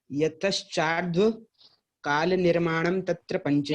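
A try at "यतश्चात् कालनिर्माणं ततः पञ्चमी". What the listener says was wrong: यहाँ पे निर्माणम शब्द नहीं है, हाँ, ये थोड़ा ध्यान रखना कि यहाँ पे जब हम प्रारंभ में पढ़ते हैं, क्योंकि हम लोग निर्माण ही शब्द जान रहे हैं तो निर्माण बोलते रहे हैं, ठीक है।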